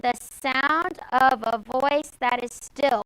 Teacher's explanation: two short one long okay and the sound sound is accented voice is accented still is accented there are two shorts before a long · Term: anapest